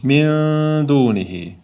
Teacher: Tushundingiz? Sukun qo'yilmagani bu degani nunni o'zidan keyingi harfga yedirib olgan degani. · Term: Ixfo qoidasi